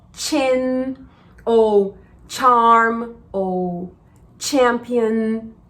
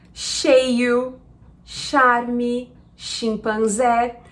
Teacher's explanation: O CH em inglês, ele normalmente tem som de tch.